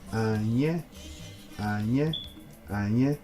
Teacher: this is a low tone followed by a high tone, and as you can see, this one is going down, this one's going up.